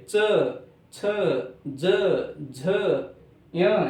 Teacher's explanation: यानी ये जो जीवा है ये जीवा तालु को चिपक रही है · ये जीवा तालु को चिपक रही है और इसीलिए इनका जो उच्चारण स्थान है ये तालु। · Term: तालव्य वर्ण